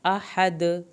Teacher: हा को हल्क से पढ़ें, दाल का कलकला करना है।